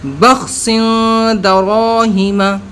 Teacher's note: را پر زبر یا پیش ہو تو موٹا پڑھیں گے، ہم نے یہاں پر موٹا کر دیا اس کو